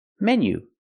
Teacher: It's a short closed sound, like 10 and bed, men. Menu. This is a menu, not a manu, menu.